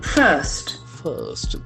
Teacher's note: the middle R is silent.